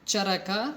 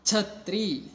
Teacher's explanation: ಚರಕ ಮತ್ತು ಛತ್ರಿ ಅನ್ನೋ ಪದಗಳನ್ನ ಉಚ್ಚಾರಣೆ ಮಾಡ್ತಕ್ಕಂಥ ಸಂದರ್ಭದಲ್ಲಿ ನಾವು ಮಹಾಪ್ರಾಣಾಕ್ಷರಕ್ಕೆ ಹೆಚ್ಚು ಒತ್ತನ್ನು ಕೊಟ್ಟು ನಾವು ಉಚ್ಚಾರಣೆ ಮಾಡ್ತೀವಿ ಅನ್ನೋದು ಗೊತ್ತಾಗುತ್ತೆ.